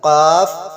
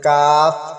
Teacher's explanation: بڑا قاف ہے یہ موٹا پڑھا جائے گا، قاف، اور چھوٹا کاف کو باریک پڑھا جائے گا، کاف۔